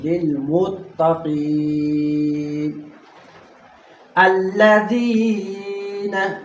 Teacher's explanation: इसके बाद या मद्दा है, या साकिन है और इससे पहले ज़ेर है, कसरा है, तो इसको हमने क्या करना है, एक अलिफ की मकदार हमने इसको लंबा करके पढ़ना है। लिलमुत्तकीन अल्लज़ीन, इसमें ज़ाल नरम के साथ पढ़ना है और या मद्दा है।